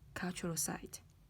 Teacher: Các bạn thấy rằng ở đây sự lựa chọn đầu tiên được nhấn với âm vực, với cái ngữ điệu đi lên, và sự lựa chọn thứ hai đằng sau or, cultural site, thì được nói với lại ngữ điệu đi xuống